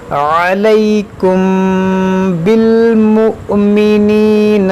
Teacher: یہاں پر دیکھیں میں نے غنہ کیا علیکم کیونکہ میم ساکن کے بعد با ہے، یہاں پر اخفائے شفوی ہوگا